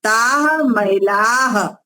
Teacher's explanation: जो महिला बहुवचन बोलते हो ना, उसमें विसर्ग का उच्चारण आना चाहिए।